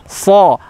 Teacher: Yang kedua adalah huruf shad. Huruf shad, huruf isti'la. Huruf yang tebal juga. Diangkat pangkal lidahnya.